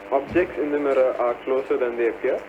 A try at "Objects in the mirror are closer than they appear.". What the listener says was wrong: But the sentence stress you have followed, is more in the Malayalam line.